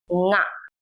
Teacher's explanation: The consonant nga, pronounced as its name, nga, is a nasal sound that you have in English gerunds or nouns like ring or sing.